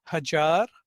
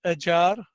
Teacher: standard Gujarati word for 1,000 is hajar, whereas Surti has ajar, showing h going to zero